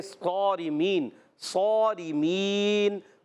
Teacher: صارمین میں صاد موٹے حروف بلکہ ایکسٹرا موٹے حروف میں سے ہے، اور را کے نیچے زیر ہے، را کو باریک رکھیں گے.